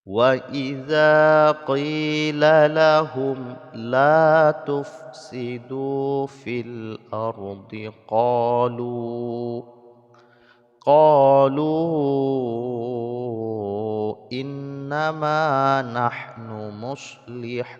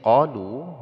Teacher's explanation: Kemudian di sini ya qalu, lu mad asli harkat dhammah bertemu dengan waw yang sukun, mad asli bertemu dengan hamzah di lain kalimat, maka ini disebut dengan mad jaiz munfasil, maka panjangnya 5 harokat. Alif yang letak setelah waw sukun, ya, di akhir kalimat ini tidak dianggap.